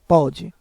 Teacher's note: sem o acento, a palavra pode fica com o som mais aberto, pode.